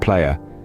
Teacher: the aya sound is a triphthong. It begins with the A sound and moves towards an E sound.